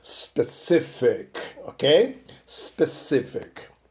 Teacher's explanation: The stress is on the middle syllable. O stress, né, a sílaba tônica é a do meio, né?